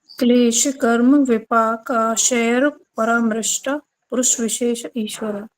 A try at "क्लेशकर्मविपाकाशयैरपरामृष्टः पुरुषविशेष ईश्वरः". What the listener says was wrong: श के बाद यह है, लेकिन यह के बाद र भी तो है, इन्होंने र नहीं बोला था ना। क्लेश कर्म विपाकाशयर, ठीक है। क्लेश कर्म विपाकाशयर परामृष्टः। अब यहाँ पे अपने पौध लेना है क्योंकि विसर्ग आ गया। क्लेश कर्म विपाकाशयर परामृष्टः पुरुष विशेष ईश्वरः।